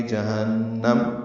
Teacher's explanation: ہاں اقصا حلق سے ادا کرتے ہوئے نون سے ملائیں گے، نون مشدد پہ غنہ ہے، جہنم. نون مشدد پہ غننے میں آواز ناک کے بانس سے ملے جائیں گے، دو حرکات تک ٹھہرائیں گے، اور وقفاً نون کو میم سے ملا دیں گے، جہنم.